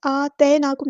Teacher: या साकिन से पहले ज़बर है तो मद लीन होगी ये, नरमी से मोड़ेंगे।